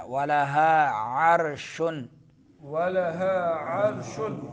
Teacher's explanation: اکثر جو ہے ہمارے بزرگ اس میں فرق نہیں کرتے ہیں، قاری حضرات بھی عرشن پڑھتے ہیں تو معنی بدل جاتا ہے۔ تو درمیان حلق سے عین کا جو ہے مخرج درمیان حلق ہے، حلق کا درمیانی حصہ ہے۔